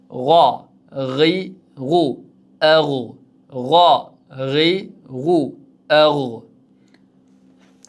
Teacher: G'oyin harafi ham halqumning yuqori qismidan chiqar ekan.